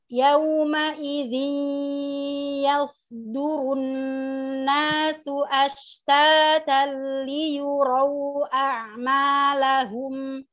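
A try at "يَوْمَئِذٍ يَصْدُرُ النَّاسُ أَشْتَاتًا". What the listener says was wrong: Hilang om, dengungnya belum ada. Yawma idhi. Dengung.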